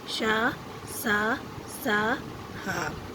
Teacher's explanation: इन व्यंजनों के उच्चारण के समय वायु मुख से रगड़ खाकर ऊष्मा पैदा करती है, यानी गर्माहट। उच्चारण के समय मुख से गर्म हवा निकलती है। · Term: ऊष्म व्यंजन